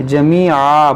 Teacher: ان العزت، عزت للہ جمیعا، دو زبر پر جب رکیں گے تو الف سے بدلیں گے